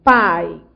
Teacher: Você tem um ditongo decrescente. Você foi da vogal A para a semivogal I.